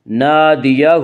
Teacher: فلیدع، فلیدع نادیہ، الف مدہ، الف ہمیشہ مدہ ہوتا ہے، الف سے پہلے ہمیشہ زبر ہوتا ہے، الف مدہ کو ایک الف کے برابر کھینچ کر پڑھیں گے